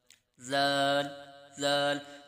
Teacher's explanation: ذال کا جو مخرج ہے وہ بھی سا کا ہی ہے، یعنی زبان کا سرا اوپر کے دانتوں کے اندرونی کنارے سے ادا ہوتا ہے